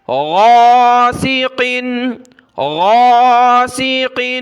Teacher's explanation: غین کو گلے سے نکالنا ہے، اس کی جگہ آپ نے گاف نہیں پڑھنا ، گا نہیں پڑھنا، گاف جو ہے عربی میں نہیں ہے